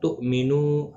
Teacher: حمزہ ساکن کو جھٹکے کے ساتھ ادا کریں گے. مینو نو واو مدہ ہے، ایک الف کی مقدار کے برابر کھینچ کر پڑھیں گے.